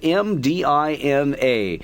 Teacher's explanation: she wanted to take me to the classic city of mdina there's no vowel in that first syllable it's just M di n a it is a closed walled